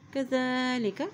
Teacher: زال کے اوپر کھڑی زبر اس لیے اس کو ایک حرکت لمبا پڑھیں گے، اور زال کو ہمیشہ نرمی سے ادا کیا جاتا ہے